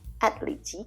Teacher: there's a th but we don't hear the th because it's silent